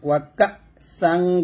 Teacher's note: এখানে হামজাটা ধাক্কা দিয়ে বলবেন